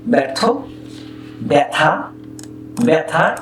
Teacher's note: ব্যর্থ ছিল মানে জফলায় অকারান্ত অকারান্ত বর্ণ ব ব ব ব এই অযুক্ত ধ্বনির সঙ্গে জফলা যুক্ত হবার পর উচ্চারণ হলো ব্যা, ব্যা